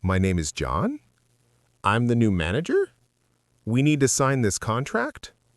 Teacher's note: It is called upspeak or high-rising terminal. This is the habit of ending a declarative statement with an upward inflection.